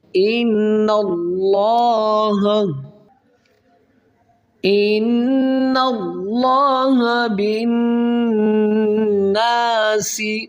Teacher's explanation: نون مشدد ہے، یہاں پر غنہ کیا جائے گا، پھر اس نون کو اللہ کے لام کے ساتھ ملائیں گے اور لفظ اللہ کو موٹا کریں گے.